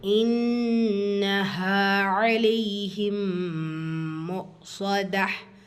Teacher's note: இன்னஹா நூன் முஷத்ததா குன்னா செஞ்சு ஓதணும்.